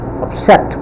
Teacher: It has two syllable, up and set, and the stress is on set because it is pronounced with a puff of sound.